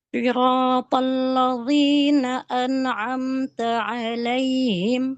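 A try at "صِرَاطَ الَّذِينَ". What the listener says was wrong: Ya, itu belum keluar tuh lidahnya. Coba za. Coba nih, lihat lidah saya keluar ke depan gigi seri kita yang dua.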